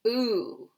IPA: u